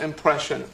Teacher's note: To pronounce impression, have in mind that the size of the syllable indicates where the accent or stress is. In this case, the accent is in the second syllable, corresponding to presh.